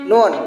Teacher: bunyi hidung sedang bersuara tipis